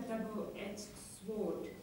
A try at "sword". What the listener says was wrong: Sword, no W. Sword, silent. Still can hear that W. Sword. Just forget the W altogether.